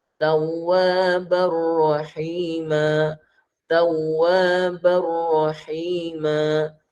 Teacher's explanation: Tapi bila masuk pada huruf kedua, bunyi nun itu atau bunyi n, ban, bin, bun tu bunyi nun ke bunyi n ke dah tak dengar langsung. Dia terus masuk pada ra. Masukkan bila gunnah tanpa dengung langsung. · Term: idgham bila gunnah